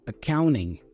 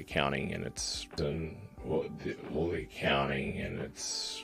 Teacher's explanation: The first A there is a schwa sound, by the way.